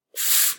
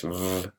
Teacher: this F phoneme is unvoiced and the V is voiced